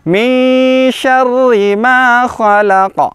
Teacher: Nah, huruf nun kemudian makhrajnya sudah masuk huruf shin. Di mana makhrajnya huruf shin adalah di tengah lidah kita, nah, punggung lidah diangkat ke atas